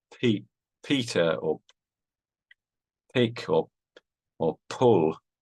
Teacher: you have a slight breath of air